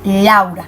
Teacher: está conformado por una vocal abierta, que es la A, y una vocal cerrada, que es la U, lo que me indica que este ejemplo hace parte de un diptongo decreciente.